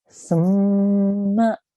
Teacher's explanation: Only place where I elongate and make a prolonged sound is where we are joining the tha to the mim. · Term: mim mushaddad